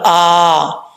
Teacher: حمزہ کے اوپر کھڑا زبر ایک الف کی مقدار لمبا کیا جائے گا